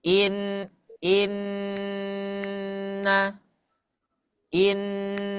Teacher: katakan dua harakat gunah dengan dua harakat Mad itu berbeda kalau dua harakat guna itu seperti tiga ketukan irama lambat